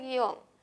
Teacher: Donde la mayor fuerza de voz la tiene la O. Hay un diptongo, es un monosílabo, no se tilda, ¿no?